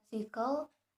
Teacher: The air moves through the mouth and produces audible friction. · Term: fricative